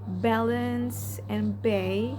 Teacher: in B the vocal cords vibrate during the release of the airflow